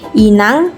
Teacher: mengalami proses penambahan bunyi G pada posisi Akhir kata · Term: paragong